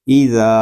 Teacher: ذال کو ہم ایک الف تک کھینچ کر پڑھیں گے کیونکہ یہاں پہ الف مدہ ہو رہا ہے۔ الف مدہ اس لیے ہو رہا ہے کہ الف سے پہلے زبر آ گیا ہے۔